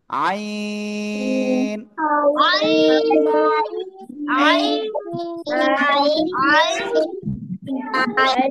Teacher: আগের থেকে লিখছিল তাহলে এই অক্ষরটার নাম কি এই যে গলা গলাটা চেপে আমরা চার আলিফ টেনে উচ্চারণ করব আর আগেরটাই এক আলিফ ঠিক আছে আইন নুবা এদিক তো ওদিক